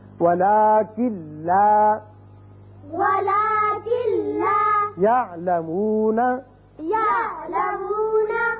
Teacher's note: اب پہلے ہے لام، لام کی مثال نون ساکن کے بعد وَلَٰكِن لَا يَعْلَمُونَ، وَلَٰكِن لَا يَعْلَمُونَ، اب کن لا نہیں پڑھیں گے بلکہ کاف سیدھا لام سے ملے گا، نون کی آواز پیدا یہاں نہیں ہوگی، یعنی غنہ نہیں ہوگا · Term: ادغام بغیر غنہ